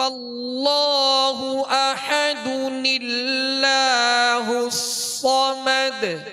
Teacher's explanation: نون ساکن کو زیر دے کر ایک چھوٹا سا نون جو ہے وہ ملا کر اس کو پڑھیں گے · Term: نون قطنی